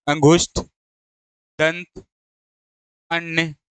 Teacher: अनुस्वार में क्या था कि उसमें नाक से अधिक सांस निकलती है। मुख से कम निकलती है।